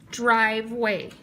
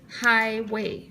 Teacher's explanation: We hear that long I in the first syllable